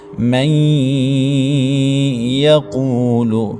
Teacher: قاف موٹے حروف میں سے ہے، موٹا پڑھیں گے، قاف کے بعد واو مدہ ہے، ایک الف تک کھینچیں گے۔ یقول لو، لام کے اوپر پڑی حرکت میں پیش ہے تو اس کو لمبا نہیں کرنا۔